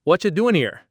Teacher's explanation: It's like 3 words instead of 5, and they're all squished together. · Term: connected speech